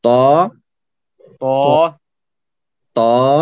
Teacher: تو تا جو ہے تا ہے یہ، تو تا بہت موٹا اور اونچا پڑھا جائے گا. ٹھیک ہے، تا موٹا ہے.